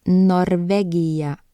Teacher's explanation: Next up is the letter N, and it makes the sound N. It's a dental sound, so your tongue should be touching the back of your front teeth.